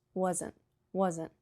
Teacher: You just tap your tongue, but sometimes the T doesn't even come out. It's just wasn't.